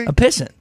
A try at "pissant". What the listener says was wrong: well, I've heard the emphasis put on the last syllable. as opposed to the first syllable.